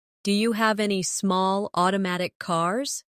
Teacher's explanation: Do you becomes diya.